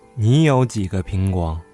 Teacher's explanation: although the word 个 is pronounced the first tone, when we use it in a sentence, we usually pronounce 个 in a neutral tone